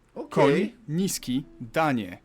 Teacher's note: 2 versions, one shorter, one longer, that sort of thing. You start with an N and soften it to ni.